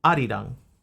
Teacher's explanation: the R is like a rolled R. So it becomes something that's between an R and a D. So I think that sound is very similar in Korean.